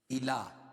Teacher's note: الا، لام پر کھڑا زبر ہے، کھڑا زبر قائم مقام الف مدہ کے 1 الف کے برابر کھینچ کے پڑھیں گے.